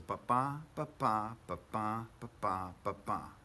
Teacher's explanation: unstressed stressed unstressed stressed unstressed stressed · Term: iambic pentameter